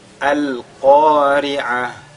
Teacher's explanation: Ici, la lettre Qaf est lue avec At-Tafkhim. Et Ri'a, c'est le Aïn.